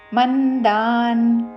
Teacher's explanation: మా మీద ఆఘాత చివరిలో పొల్లున్న